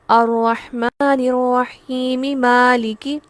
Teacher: میں میم کی زیر کو بھی پڑھ رہی ہوں اور میں آیت کو ساتھ بھی ملا رہی ہوں · اگر میں آیت کو آگے ملا دوں گی تو الرحیم پہ مد نہیں ہوگی